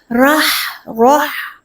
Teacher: را کو پہلے پر پڑھنا ہے، بسم اللہ راہ، ہا سے ملائیں گے، ہا کا مخرج کیا ہے؟ وسط حلق سے ادا ہوتا ہے